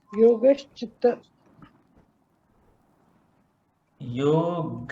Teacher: Visarga followed by cha or cha, then the visarga becomes the shakara.